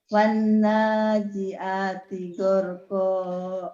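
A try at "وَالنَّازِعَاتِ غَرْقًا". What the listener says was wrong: Udah bagus, tinggal ainnya Umi yang kurang nih. Wan nazi'ati gharqa. Ainnya dilatih biar mantep ya.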